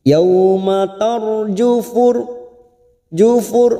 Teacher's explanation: ada ro sukun yang didahuli fathah kita baca tafkim